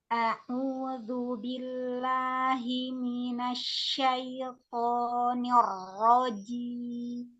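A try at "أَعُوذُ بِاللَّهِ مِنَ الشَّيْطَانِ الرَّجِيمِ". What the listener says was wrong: Huruf to-nya tebalkan lagi Minasyaitoni.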